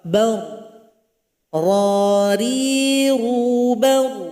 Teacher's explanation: Jadi ketika dia didahului yang fathah maka dibaca tebal.